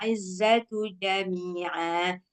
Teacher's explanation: Yang ja ini nggak usah keluar apanya, nggak ada sifat sofir.